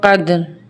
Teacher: क़ाफ दाल ज़बर क़द, दाल पे भी हमारी आवाज़ पलट कर आएगी क्योंकि दाल हरूफ क़लक़ला का हर्फ है। क़द, रो दो ज़ेर रिन, क़दरिन, आगे वक्फ क़द्र।